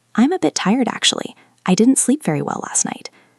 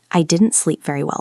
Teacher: Listen to the intonation. It goes down at the end.